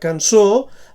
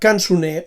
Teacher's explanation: la O tancada de la paraula cançó es transforma també en U en la paraula cançoner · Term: reducció vocàlica